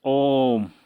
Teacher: प्लुत स्वर, इसको बोलने के लिए 3 मात्रा का समय लिया जाता है।